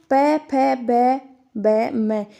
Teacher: वो ओष्ठ ध्वनि में आते हैं ठीक है याद रखना है जिन व्यंजनों का उच्चारण होठों से होता है और वो ओष्ठ ध्वनियां